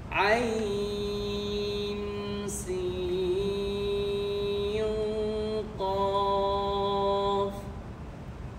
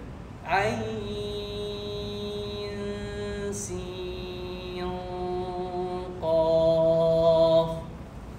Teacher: you stop on the qaf for a little bit. See, because there's shadda in here.